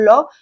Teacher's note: जीभ घूम जो है आपकी घूम जाती है और साइड से हवा निकलती है। तो ये है जीभ तालु से टकराकर साइड से हवा बाहर निकलती है। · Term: पाश्विक व्यंजन, पार्श्विक व्यंजन